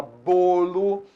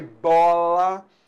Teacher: Então bolo, o timbre é fechado. Bola, o timbre é aberto.